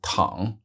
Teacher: next verb is Tong with the third tone meaning to lie down